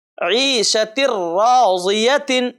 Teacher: تنوین کے بعد را ہے اور را پر تشدید لگا ہے، تو چونکہ را آ گیا ہے تنوین کے بعد اس لیے بغیر غننے کے ملا کر کے ہم اس کو پڑھیں گے۔ یہاں ہم عیشت راضیت ایسا نہیں پڑھیں گے۔